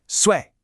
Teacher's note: This has to be sharp like a command. It falls decisively. Sway. Now, the most frequent error I hear is when students just say it all in one flat monotone voice like this. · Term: fourth tone